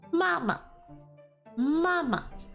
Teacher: mama which has a first tone which is the flat tone